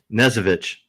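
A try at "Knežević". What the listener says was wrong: Almost. You have to say the K. It's not English. It's Serbian. You do have to say the K.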